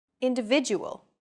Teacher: are stressed are valued greater than syllables that are unstressed individual the stressed syllable V in individual is deemed more important so it's pronounced longer than all other syllables